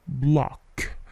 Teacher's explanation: Block, block. Dengan bunyi yang memantul ya di huruf K-nya